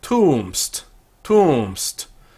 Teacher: The two vowels slide into each other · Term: elision